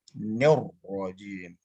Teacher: Pada saat ditasjid, maka seluruhnya kedua roh tersebut menjadi tafkim keduanya.